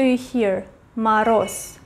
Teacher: it is written voiced consonant z maros but it is pronounced as s